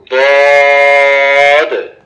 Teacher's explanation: 7 number মাখরাজ, জিহ্বার গোড়ার কিনারা উপরের মারির দাঁতের গোড়ার সঙ্গে লাগাইয়া দদ